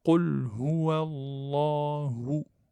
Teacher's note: Le lem, il est emphatique. Donc, avec une shadda. Donc, je le tiens un petit peu. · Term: lamul jalala